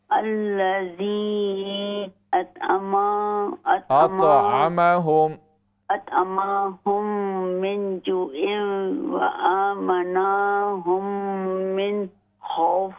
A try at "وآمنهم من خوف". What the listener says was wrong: وآمنا نہیں ہے. وآمنهم من خوف.